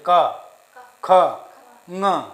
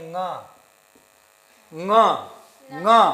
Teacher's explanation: ङ किससे बोल रहे हैं? कंठ के साथ साथ नासिका से भी बोला जा रहा है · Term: अनुनासिक